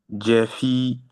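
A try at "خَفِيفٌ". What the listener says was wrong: Là, c'est pas un gym.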